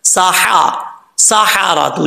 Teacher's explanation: मध्य मुत्तसिल है, इसको पांच अलिफ के बराबर लंबा करना है · ये हा भी बरीक पढ़ा जाएगा, क्योंकि जिस हल्क से अदा होता है उस हल्क का ताल्लुक मुंह की तरफ है, इसलिए इसको बरीक पढ़ेंगे। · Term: हा बरीक